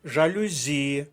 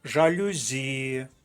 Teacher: жалюзі наголос на звук і третій склад